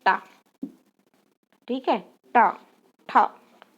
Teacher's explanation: मूर्धा ध्वनि के उच्चारण के समय जीभ की जो नोक होती है वो कभी कभी उलट जाती है, परंतु जिह्वा की नोक सीधे से भी कभी कभी मूर्धा को स्पर्श कर लेती, कभी कभी पलट जाती, कभी कभी सीधे से कर लेती है। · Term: मूर्धन्य ध्वनि